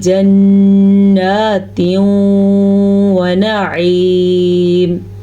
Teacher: یہاں پہ نون کا غنہ ہم نے ادا کیا کیونکہ نون کے اوپر شد ہے. یہاں پہ ہم نے ادغام بالغنہ کا قاعدہ ادا کیا ہے کیونکہ تنوین کے بعد یمون میں سے واو آیا ہوا ہے